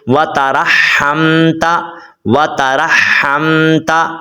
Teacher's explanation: وترحمت، را کو اس ہا کے ساتھ ملانا ہوتا ہے. را کو اس ہا کے ساتھ ملائیں گے اور ہا کو میم کے ساتھ ملائیں گے